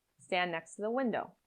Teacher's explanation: In stand next to the window, the D in stand can disappear. The T in next is linked to the T in to.